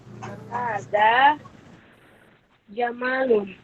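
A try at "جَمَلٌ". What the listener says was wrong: Panjang memnya.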